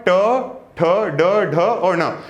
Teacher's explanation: इनको जब आप पढ़ेंगे तो इनका उच्चारण होता है मूर्धा से, इसलिए इनको हम बोल देते हैं कि ये वर्ण कौन से हैं, मूर्धन्य हैं। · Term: मूर्धन्य वर्ण